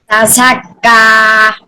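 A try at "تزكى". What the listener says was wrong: হ্যাঁ, আপনারা শক্ত হয়ে গেছে, শক্ত হবে না, সিটি হবে তা ঝা।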